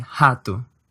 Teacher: in hatu note that while the IPA has an h and the sound you're hearing is that familiar H sound from English in Portuguese this is spelled with an R